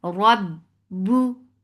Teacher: Whenever ra is with fatha, it is heavy. Rab and ba will cut off the sound makhraj very abruptly. Rab bu for the circle ellipse, the sound is short.